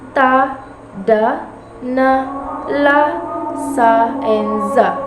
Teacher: The consonant sounds are made when the tongue tip contacts the alveolar ridge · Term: Alveolar sound